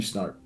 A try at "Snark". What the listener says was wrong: Well, so my name is Snark, not Snart.